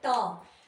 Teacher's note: अब आप बोल के देखो ट, जब हम ट बोल रहे हैं तो जो हमारी जीभ का आगे वाला हिस्सा है वो तालु को टच कर रहा है, ऊपर वाले तालु को टच कर रहा है।